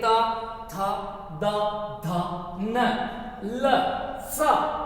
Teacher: यह वर्ण बोलेंगे तो दंत तक जीवा स्पर्श होगी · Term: दंते वर्ण